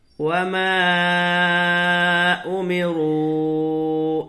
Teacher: دیکھیں یہاں پر مد منفصل ہوگا، اس لیے کہ حروف مدہ کے بعد حمزہ دوسرے کلمے میں آ رہا ہے تو اس کو کھینچ کر کے پڑھیں گے۔